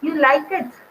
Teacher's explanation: there is a rising tone in statements used as questions, tone questions.